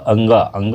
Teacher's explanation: अंगा क्या है कंठ और नासिका दोनों से आ जाता है